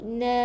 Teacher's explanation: lembutkan, bukan na tebal, na, buka mulut sebab baris atas kena buka mulut.